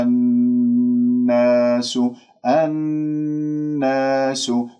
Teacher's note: أنت جبت الغنة مع النون المشددة أكمل ما تكون